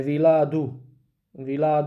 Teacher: the proper pronunciation of villa is with the short uh ah at the end